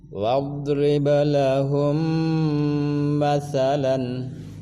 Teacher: Lahum mim mati bertemu mim, namanya idgham mimi atau idgham mutamatsilain, tahan dengunkan 2 harakat.